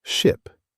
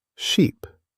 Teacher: The short one is quick and relaxed. The long one stretches like a smile.